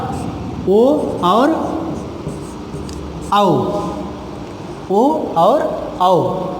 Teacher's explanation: अब ओ का भी उच्चारण कंठ प्लस तालु से और आओ का भी उच्चारण कंठ प्लस तालु से होता है।